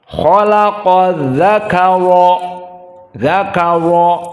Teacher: dalam keadaan fathah, maka dzakara ra-nya mufakhamah fi darajah ats-tsaniyah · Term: ra mufakhamah